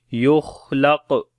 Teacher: لم خا اور قاف کو موٹا پڑھیں گے، خا کے اوپر صفت ہمس بھی ہوگی اور قاف کے اوپر قلقلہ کریں گے